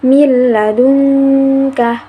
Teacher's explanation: dalam bacaan tersebut itu ada nun sukun yang bertemu dengan huruf lam, maka dibacanya tanpa mendengung. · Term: Idgham bilagunnah, idgham bila ghunna